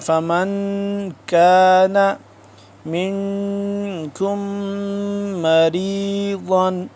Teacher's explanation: من نون ساکن ہے، یہاں پہ ہم اخفا کریں گے